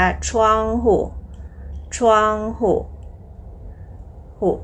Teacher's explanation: มีเสียงเบาที่พยางค์ที่2นะคะ อ่านว่าทองhuทองหุหุก็คือสระอูนะคะทุกคนแต่เป็นเสียงเบาค่ะทองหุหุพยัญชนะคืออะไรนะคะหุเหอะเหอหุ